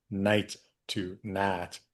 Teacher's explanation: one of the most noticeable features of a lot of Southern USA English is that monophthongization